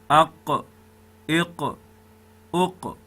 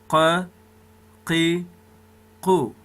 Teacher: تالو دغه دی دوستانو. اقصا اللسان د پورته تالو سره وموښتي، د دغه ځای څخه قاف راوځي. دغه د قاف مخرج دی چې هر کله چې اقصا اللسان د لوړ مقابل تالو سره وموښلي، دلته قاف ادا کیږي.